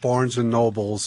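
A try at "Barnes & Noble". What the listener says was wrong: We're telling Barnes and Noble. There's no S in Noble.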